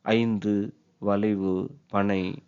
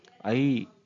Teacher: ஆனால் சொல்லில் வரும்பொழுது, அதாவது சொல்லின் முதலிலும் இடையிலும் கடையிலும் அமைந்து உச்சரிக்கப்படும் பொழுது தன் மாத்திரையில் அளவான 2 மாத்திரையிலிருந்து குறுகி 1 மாத்திரை அளவில் ஒலிக்கிறது. இங்கனம் ஐகாரம் குறுகி ஒலிப்பதற்கு ஐகார குறுக்கம் என்று பெயர்.